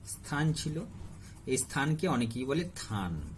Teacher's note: শব্দের আদিতে অবস্থিত ব্যঞ্জন ধ্বনি লুপ্ত হয়ে গিয়েছে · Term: আদি ব্যঞ্জন লোপ